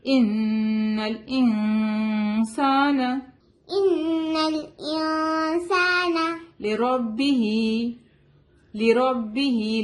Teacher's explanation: ہم ان کو نون کو ظاہر نہیں کریں گے. ہم ایسے نہیں بولیں گے انسان. ہم نون کو چھپائیں گے یہاں. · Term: اخفا